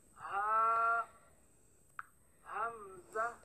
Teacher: for ha and hamza, you pronounce them from the bottom part of your throat